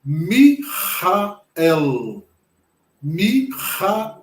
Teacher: Ele tem o som do L com a língua no céu da boca. Então, como ficaria esta palavra?